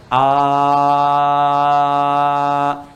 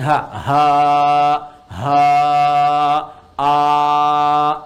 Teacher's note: huruf Hamzah Hamzah a dengan ha itu satu makhraj yaitu bagian kerongkongan bagian bawah · Anda mengucapkan a tidak ada sekat udara mengalir saja mengalir